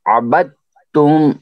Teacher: ابد تم نہیں ہونا چاہیے، حمزہ نہیں پڑھا جانا چاہیے، آئین، آئین ظاہر ہونا چاہیے، آئین پورا، اس کے اوپر کافی مشق کرنی ہے، تو اس کے بعد پھر نکلے گا، ٹھیک ہے۔